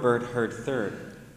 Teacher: the only vowel in these words is is the vowel R